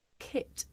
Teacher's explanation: Please listen to the aspiration of k, right? Of the initial k.